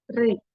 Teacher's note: kasrohnya hati-hati jangan ikut tebal, ya. Jadi tipis, turunkan, pangkal lidahnya diturunkan.